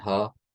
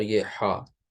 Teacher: اس میں حلق سے زور دے کے آواز نہیں، صرف آپ کو منہ کو کھول دینا ہے